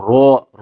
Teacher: رو موٹا پڑھیں گے لیکن رو، رو ہونٹ گول نہیں ہوں گے